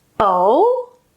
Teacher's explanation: oh, oh, high to low. We can also go low to high. Oh, that indicates a question.